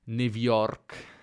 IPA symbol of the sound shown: v